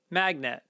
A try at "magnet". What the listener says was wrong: Oh, you're not putting the emphasis on the first part of the word? You're too concerned with net.